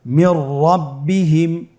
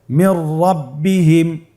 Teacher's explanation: নুন সাকিনের পরে যদি র হরফ আসে তাহলে নুন সাকিনকে পরবর্তী হরফের সাথে মিলিয়ে গুন্না ছাড়া পড়তে হবে। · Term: ইদগামে বিলা গুন্না